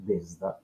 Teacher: S, abans d'una D, se sonoritza.